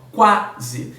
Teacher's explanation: a pronúncia do A é muito mais significativa, é muito mais forte do que a pronúncia do U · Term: semivogal